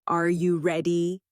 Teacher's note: For example, when a native speaker asks a yes or no question, like, "Are you ready?" the pitch of their voice goes up at the end